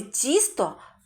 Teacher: у слові тісто перший звук ть приголосний який м'який а четвертий звук т приголосний який твердий